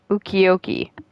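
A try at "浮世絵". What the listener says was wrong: You're saying ukiyo-e. There's no K or C there.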